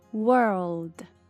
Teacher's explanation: Se você não pronunciar o L, fica word, que é palavra.